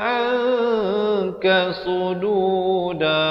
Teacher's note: Di sini ikhfa hakiki. Bunyi nun pun tidak, bunyi kaf pun tidak. Dia samar di antara kedua-duanya, 2 harakat.